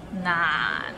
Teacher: it starts with n and ends with another n. Nan, and it's in a low tone